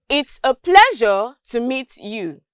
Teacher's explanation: when i said pleasure there was a rise in my tone and then when i got to you there was a drop in my tone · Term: intonation